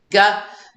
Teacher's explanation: G and K are the same except for G is voiced